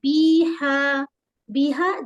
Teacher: یہاں پر یا مد ہے، 2 حرکت کھینچیں گے